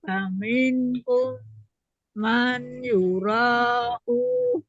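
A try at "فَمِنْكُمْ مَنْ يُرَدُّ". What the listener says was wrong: Ini idgham jadi bukan man Bunda. May yuraddu ila.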